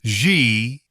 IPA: ʒ